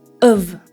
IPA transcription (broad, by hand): əv